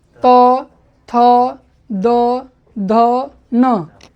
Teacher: कहते हैं लृ, लृ दांत में सट के बोलता है। तवर, तवर्ग में त, जिह्वा को दांत में सटा के बोलना है